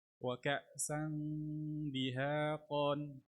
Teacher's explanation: سين تنوين بالفتح مخفى عند الدال مكسورة بغن حركتين